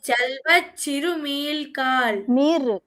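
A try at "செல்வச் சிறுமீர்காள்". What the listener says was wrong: మీల్ అంటున్నావు.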